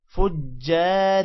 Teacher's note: جیم کے بعد الف ہے، لمبا کریں گے، را کو موٹا نہیں کرنا